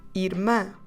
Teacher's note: finish with the sound ah again nasal and we say Irma stress the last syllable make it nasal mouth open this time